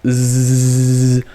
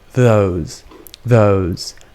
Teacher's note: the tongue is behind the teeth and the tongue comes up a little bit but it's just a little bit we don't stick it out